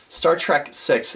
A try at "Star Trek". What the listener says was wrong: Trek. You keep saying track. Star Trek.